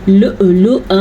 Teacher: لؤلؤا حمزہ کے اوپر ساکن ہے تو یہاں پہ ہلکا سا جھٹکا پیدا ہوگا۔